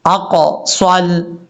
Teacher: جو قاف ہے یہ قاف فل مود پڑھا جائے گا، اقصل، صاد کو فل مود پڑھنا ہے، سین نہیں پڑھنا